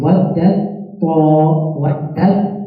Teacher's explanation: So what you'll do is you'll have idgham, where the ta and the ta, they combine.